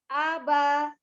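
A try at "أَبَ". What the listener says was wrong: Jangan ada terpleset banyak, jangan ada naik A-nya. Aba, itu kan kepleset banyak.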